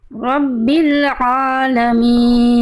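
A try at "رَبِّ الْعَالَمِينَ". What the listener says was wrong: Dikit Bunda tinggal ini aja, ainnya kurang tipis ya, jadi masih alamin aja gitu. Jadinya jadi lidahnya ringan kan, aula mulutnya buka, tengah tenggorokannya tekan coba.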